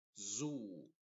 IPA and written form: zuː (Zoo)